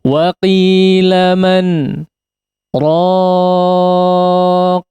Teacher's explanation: Sebetulnya berhenti seperti waqaf, bedanya tidak bernafas ya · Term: saktah